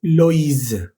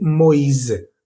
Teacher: Ya no va a ser wa, sino o i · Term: tréma